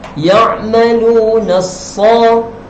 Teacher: Bunyi lam ni kita hilangkan. Kita masuk terus ke dalam sad. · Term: alif lam syamsiah